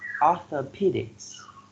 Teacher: four syllables and the third syllable receives the stress